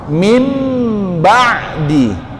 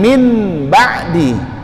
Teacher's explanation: Mim, jangan min ba'di, tapi suara nunnya dihilangkan diganti ke suara mim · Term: iqlab